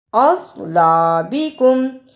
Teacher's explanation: اصلابکم، اسے اسلابکم نہیں پڑھنا، صاد کی جگہ پر سین کی آواز نہیں آنی چاہیے، صاد کو موٹا پڑھنا ہے